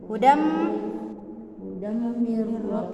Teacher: Ya, bukan hudan. Kita tidak baca lagi hudan, tapi langsung masuk di huruf mim, makanya dikatakan melebur itu dannya. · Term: Idgham bigunnah